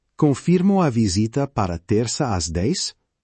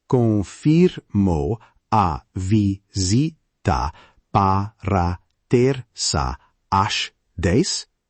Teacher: Use a polite rising intonation to check.